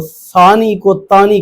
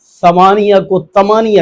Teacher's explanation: عام بول چال میں وہ ثانی کو تانی کہہ دیتے ہیں، ثمانیہ کو تمانیہ کہہ دیتے ہیں، حالانکہ تا اور حرف ہے، ثا اور حرف ہے، اور دونوں کا معنی بھی ظاہر الگ ہے۔